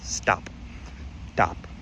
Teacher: But if you want to say unaspirated consonants, think of words like stop, and that t sound gets unaspirated when next to the s. So it's not stop, it's stop, stop.